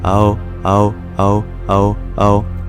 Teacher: when you say ow quickly it becomes oh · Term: dip thong